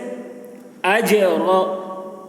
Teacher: لا نضیع، ضاد کی آواز موٹی ہوتی ہے، نضیع اجر، جیم میں قلقلہ ہوگا، جیم کی آواز ڈبل نکلے گی